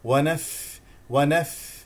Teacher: الفاء فيها همس اعطيها هواء لكي تخرج الفاء